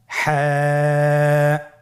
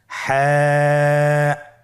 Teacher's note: হা হরফটি কীভাবে উচ্চারিত হবে? হা হরফটি উচ্চারিত হবে কণ্ঠনালীর মধ্যখান হতে। গলা চিপে ধরে আপনি উচ্চারণ করুন।